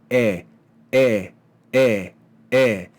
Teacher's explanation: It's produced further forward in the front of your mouth. It's a palatal vowel.